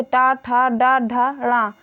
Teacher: मूर्धा और जीभ के स्पर्श से बोले जाने वाले वर्ण मूर्धन्य कहलाते हैं